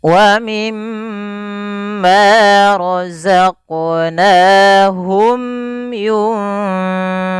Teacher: mim di sini tahan dulu ya, jangan langsung dibaca wa mimma, tapi suara itu wajib ditahan